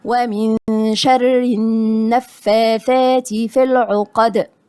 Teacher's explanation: النون غنة إخفاء والراء مرققة لأنها مكسورة